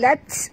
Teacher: bunyikan hamas pada huruf ta